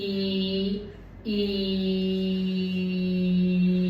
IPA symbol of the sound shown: i: